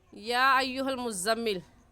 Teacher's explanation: और इस मद को हम 4 अलिफ़ के बराबर खींचेंगे, ना ही इससे कम और ना इससे ज़्यादा। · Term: मद्दे मुत्तसिल